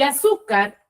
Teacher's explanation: la sílaba tónica está en la sílaba su